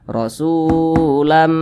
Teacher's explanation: maka huruf Sin dibaca panjang Mad Thobi'i panjangnya dua harakat atau kira-kira dua ketukan